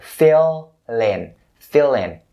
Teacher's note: linking the L sound at the end of this word to the word in, which is standing next to it.